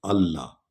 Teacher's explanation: یہ جزم والے حرف کو نہیں پڑھ رہے، آگے جو حرف شد والا آ رہا ہے اس کو ہم پڑھ رہے ہیں کیونکہ اس پر شد ہے.